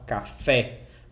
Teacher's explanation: essa segunda sílaba ela é mais forte porque tem um assento está marcado aqui então se fala café você não fala café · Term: sílaba tônica